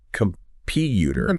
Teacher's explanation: That PU gets the emphasis.